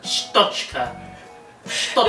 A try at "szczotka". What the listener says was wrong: There is no T in it. I mean, there is, but. Sztotka. Sztotka. Czy. Czy. Sztotka.